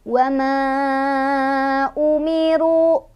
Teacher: Dibacanya panjang, boleh 4, boleh 5. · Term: mad jaiz